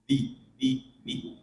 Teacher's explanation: Ujung lidah tak bertemu dengan pangkal gigi seri atas. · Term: dzal